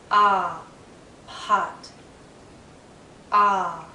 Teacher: it's a very open sound as well my lips are relaxed but my my mouth is in a very open position my